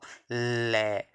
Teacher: दोनों साइडों से हवा बाहर निकली